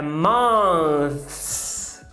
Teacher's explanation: Meses acaba com a interdental desvozeada, o F. Então você vai falar meses, é months.